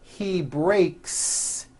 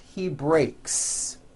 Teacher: an unvoiced K sound there's no voicing on that K so when you put the word in the third-person he breaks the S you add also remains unvoiced